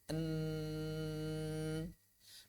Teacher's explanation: Ketika lidah menyentuh langit-langit, maka aliran suara pada huruf nun mengalir melalui rongga hidung